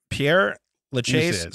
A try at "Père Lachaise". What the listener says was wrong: Père Lachaise, I'd say. You said Peter Lachaise.